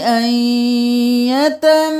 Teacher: اب یہاں پر ہم میم کو 5 الف کے برابر کھینچیں گے. صرف اس حرکت کے ساتھ نہیں پڑھیں گے.